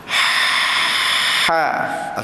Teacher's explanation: Kemudian haim huruf ha yang pedas itu. Ha pedas yang berada di tengah kerongkong.